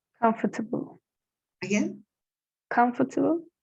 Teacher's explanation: the key point is to stress the first syllable · it correctly on the first syllable on the left the sound the syllable in the in in the middle almost disappear sometimes it disappears completely